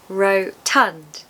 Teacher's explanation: How do we pronounce it? It's just 2 syllables, so fairly easy, I would say. Rotund. Stress the second syllable.